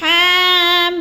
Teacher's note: अब अगला लफ्ज़ है हामीम, हा के ऊपर खड़ी ज़बर है, थोड़ा लंबा करना है, और मीम को जो है ज़्यादा लंबा करना है, और मीम, इधर 2 मीम इकट्ठे हो रही हैं, तो क्या है, जब आखिरी मीम को अदा करना है तो हमने आवाज़ को नाक में छुपा कर पढ़ना है, हामीम, इस तरह।